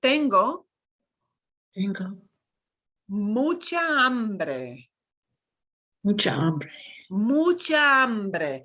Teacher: to notice we don't pronounce the h you learned last time we don't pronounce an h it's silent